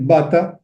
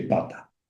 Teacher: el sonido B es sonoro, es decir, que cuando lo pronuncio vibran las cuerdas vocales, y el sonido P es mudo. Cuando lo pronuncia no vibran las cuerdas vocales.